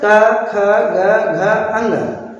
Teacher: का उच्चारण स्थान कंठ से होता है। इसलिए इन वर्गों को क्या कहते हैं? कंठय वर्ण कहते हैं।